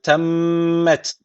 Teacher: için bir Elif uzatıp öyle duruyoruz devam edelim ve temmet derken şeddeli Mim var mutlaka bir elif miktarı tutuyoruz hatırlayın Kural neydi nun ve mim harfi mutlaka şey de almışsa